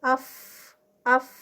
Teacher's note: اف، اف سانس نہیں روک سکتے. رخاوہ ہے، رخاوہ کی وجہ سے رخوت ہے، اس میں نرمی ہے تو اس میں آواز جاری رہتی ہے · ہمس کا لیٹر ہے، ہمس ہے تو سانس جاری رہے گی. اف، اف سانس نہیں روک سکتے.